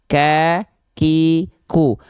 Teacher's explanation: karena dia tertahan suaranya ke nafas jadi enggak betul-betul ngalir dia jadi Hanya berupa percikan nafas saja ya · kenapa Oh kenapa huruf Kaf ini dia bukan mengalir nafas karena dari segi suaranya dia bukan rakhwah bukan mengalir suara tapi tertahan suara